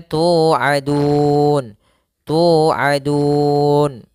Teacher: pada lafal tu di sini ada bacaan mad tabi'i, yaitu panjangnya 2 harokat. Ya, ditandai dengan adanya dhammah bertemu dengan huruf waw sukun.